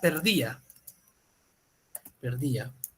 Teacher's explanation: la vocal cerrada es la que adquiere mayor fuerza de voz y como adquiere mayor fuerza de voz va a adquirir la